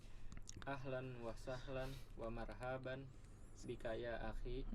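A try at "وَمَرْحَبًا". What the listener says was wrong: Ya, wa marhaban hanya pendek.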